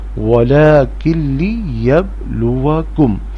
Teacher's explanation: نون ساکن کے بعد لام، اس لیے نون کی آواز نہیں آئے گی